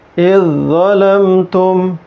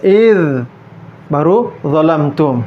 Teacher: Nah, baca idznya ini tidak panjang, langsung ke huruf dho-nya, ya, melebur ke huruf dho-nya. Tidak pula ada jeda waktu, misalnya idz baru dzalamtum, tapi langsung idzalamtum.